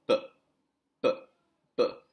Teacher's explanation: you see that there's your two lips, b, are obstructing the airflow.